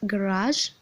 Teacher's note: the vocal cords are held together so the sound is voiced the passive articulator is the vellum